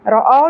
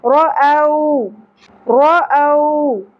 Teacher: واو ساکن سے پہلے زبر حرف لین میں سے ہے، اس لیے یہاں پر نرمی سے پڑھیں گے. رأو نہیں پڑھنا.